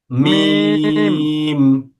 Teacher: মিমটা হলো দুই ঠোঁটের শুকনো অংশ থেকে।